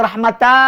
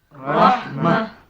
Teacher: Kalau ada baris dua dia tak boleh kata rahmat. Tak boleh kata nikmat. Kita kata rahmah saja. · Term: ta marbutah